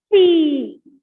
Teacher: So this P or B come out with an explosion. That is why these are called as bilabial plosives. Bilabial means involving two lips.